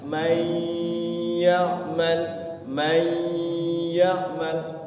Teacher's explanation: Masukkan dulu huruf nunnya kepada iya. Jangan man ya, jangan begitu langsung masuk ke iya, tapi ya-nya itu nanti setelah masuk itu gunakan may ya'mal. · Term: idgham bigunnah